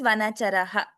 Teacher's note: if you're giving a break before saying Bhaktavatam Sayate, please pronounce it as Vanacharaha. Pronounce the entire Visarga.